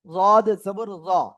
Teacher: জিহ্বার গোড়ার কিনারা উপরে মাড়ি দাঁতের গোড়ার সাথে লাগিয়ে